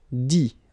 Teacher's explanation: You don't pronounce the final T.